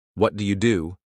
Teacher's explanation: The second do usually has more stress.